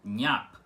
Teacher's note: com o i rápido e logo em seguida o a mais forte, que é a letra principal da sílaba, uma vogal, tá?